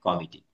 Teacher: ইংরেজি শব্দে অ সব সময় বিবৃত হয়।